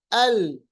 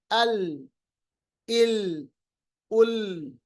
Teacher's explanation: आखिर में जुबान ऊपर के दांतों के साथ ज़वाहिक तक मिली रुकी तो हमें पता चला कि हमने लाम को सही अदा किया।